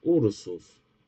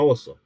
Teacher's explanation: evolución de la vocal cerrada, posterior, breve en posición inicial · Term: u breve